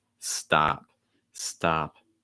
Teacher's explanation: in stop, the ah sound, you should hear it a lot more than like the p sound at the end